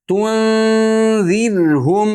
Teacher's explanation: rodni ingichka qilamiz sabab oldi kasralik tunirum undan keyin ham nima ingichka harf kelyapti mimni halalqala qilmaymiz. · Rodi ingichka qilamiz, sabab oldi kasralik.